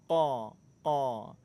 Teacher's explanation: Huruf qaf makhrajnya pertemuan antara pangkal lidah dengan langit-langit lunak. Qa. Huruf qaf sifatnya syiddah, kuat, tapi nggak ada sifat hamasnya, nggak ada aliran udara.